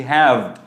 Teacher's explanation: উপরের দাঁতটা নিচের ঠোঁটটা একসাথে লেগে একটা ভাইব্রেশন তৈরি হচ্ছে, ভাইব্রেশনের সাথে যে আওয়াজটা বেরোচ্ছে ওটাই হচ্ছে ভ